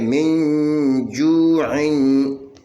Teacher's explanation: زیر من جیم پہ اخفا جو، عین دو زیر عین، من جو عین، یہ نون ساکن کے بعد جیم ہے، جیم حروف اخفا میں سے ہے، یہاں پہ اخفا ہوگا 2 حرکت کے برابر، ہم غنہ کر کے پڑھیں گے۔